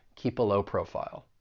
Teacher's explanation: We can link that consonant sound in keep with that schwa sound in the article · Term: linking